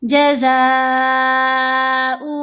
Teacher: زا کے اوپر مد متصل ہے، ہم نے اس کو 5 حرکات کی مقدار لمبا کرنا ہے